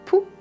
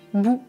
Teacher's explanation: Nous avons le « p » qui est sourd et le « b » qui est voisé. Ça veut dire que P, je n'utilise pas la voix, mais le B, j'utilise la voix.